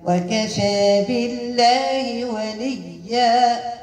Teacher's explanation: بالله لام اسم الجلال مرققة لأنها مسبوقة بكسر